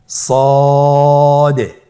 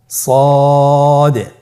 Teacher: সদ হরফটি পুর হরফ, মোটা হরফ, উচ্চারণের ক্ষেত্রে মোটা করে পড়তে হবে এবং উচ্চারণ করার সময় 3 আলিফ টেনে পড়তে হবে।